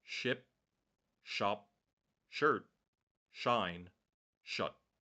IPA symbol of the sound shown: ʃ